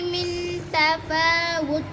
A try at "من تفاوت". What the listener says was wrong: अब गुन्ना पूरा नहीं करते من تفاوت